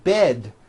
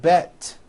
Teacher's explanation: bed has a voiced D ending it's not bet with an unvoiced T its bed with a voiced D rode also has a voiced